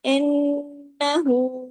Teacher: नून पे तशदीद है बड़ा गुना हुआ